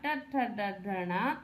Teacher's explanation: ट वर्ग मूर्धा से उच्चारण होता है